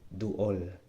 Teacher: Remember, two vowels. There's that glottal stop.